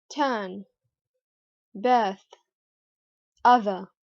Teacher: British people, on the other hand, drop the R sound